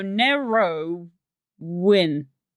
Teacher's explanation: we essentially put a W in it even though there is no W because we go Nero win is how we pronounce it or how a lot of us pronounce it.